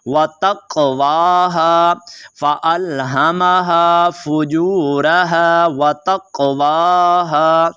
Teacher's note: काफ के ऊपर आपने थोड़ा सा कलकला करना है